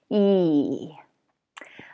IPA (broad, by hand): iy